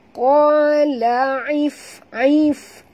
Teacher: Ketap gigi atas ke bibir bawah, dia keluar angin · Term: bunyi hamasnya